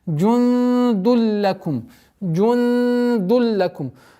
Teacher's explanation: здесь первое ихфа в размере 2 огласовок, сокрытие, а потом применяем ассимиляцию без назализации. Ассимиляцию без назализации.